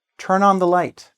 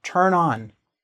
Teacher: So "turn on", you have like a liaison, we can say in French. You have a liaison, a connection between the consonant sound and the vowel sound